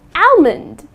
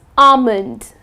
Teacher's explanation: Okay, so the L is silent.